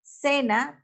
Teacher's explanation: esa marca que nosotros le colocamos a las palabras ejemplo cena tiene acento que recae sobre la primera sílaba ce